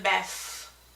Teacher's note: it is actually a th at the end and it's voiceless